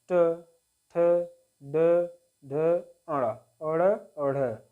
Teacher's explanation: और ट वर्ग, यानी कि ट वर्ग जो होता है इसको बोलते हैं मूर्धा, यानी कि मूर्धन्य, मुंह के भीतर की छत का अगला भाग जो होता है उसको बोलते हैं मूर्धन्य